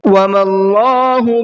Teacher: اللہ کے لام کو منہ بھر کے پڑھنا ہے، اس لیے کہ اللہ کے لام سے پہلے زبر ہے